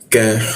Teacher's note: lidahnya kita turunkan sehingga ka itu ada hembusan udara